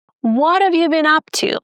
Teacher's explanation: In most cases, we are going to stress the word what and up. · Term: sentence stress